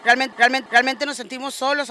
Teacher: She's saying the R as if it were an English R. Not quite, but it's definitely not a traditional Spanish R.